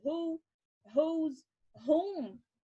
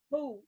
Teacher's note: quando o WH tá no começo e depois tem um som de um O longo ou de um O que faz som de U, tipo who, whose, whom, que aí ele vai soar como um H